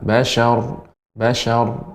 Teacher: Basyar di sini juga rnya tebal ee jadi ya pengucapannya tanpa dimonyongkan